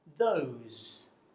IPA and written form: ðəʊz (those)